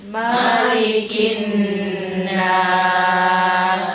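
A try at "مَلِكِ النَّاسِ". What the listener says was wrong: Dengunya agak lama, lunnya. Malikin nas.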